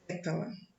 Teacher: a sílaba forte, se encontra na antepenúltima posição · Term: proparoxítona